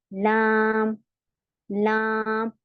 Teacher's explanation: लाम हमारा चौड़ा मखरज है, चौड़ा यानी ब्रॉड है। इसमें जबान हमारी थोड़ी चौड़ी हो गई ना, यहाँ से यहाँ तक की इतनी हिस्सा लगता है, इसलिए इसे चौड़ा मखरज भी बोलते हैं, इसका चौड़ा मखरज होता है। · और किस में लगेगा? मसूड़ों में लगेगा, दांतों में नहीं लगेगा।